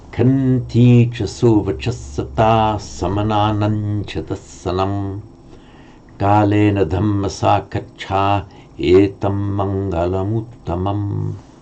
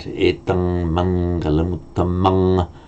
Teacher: the final M, which can be written as an anuswara, but it's pronounced in the Ganges Valley as a final M